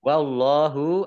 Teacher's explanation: Allahnya dibaca tebal karena harokat di depannya fathah. Lam fathah berdiri mat tabi'i.